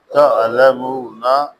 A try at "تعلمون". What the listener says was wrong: عین کو ادا کرنے کی کوشش کیا کریں، کیونکہ ایک یہ تعلمون ہے، تم جان جاؤ گے، ایک یہ ہے تم دکھ دیتے ہو، درد و الم.